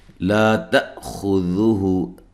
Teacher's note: تا حمزہ کو جھٹکے سے ادا کرنا ہے، خا کو موٹا ادا کرنا ہے ، ہو مد اصلی ہے، سینتوں یہاں نون تنوین کا ادغام